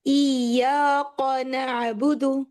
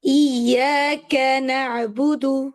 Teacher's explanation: تو جب آپ اس کو پڑھ رہے ہیں نا تو کاف میں ہلکا سا قوف کا ٹچ آ رہا ہے، اور قوف ایک ہیوی لیٹر ہے، کاف لائٹ ہے